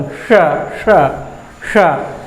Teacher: मूर्धा से, इसीलिए इसको बोलते हैं मूर्धन्य शब्द, क्योंकि यह मूर्धा से उच्चारित होता है। जीभ हमारा जो है मूर्धा में जाके स्पर्श करता है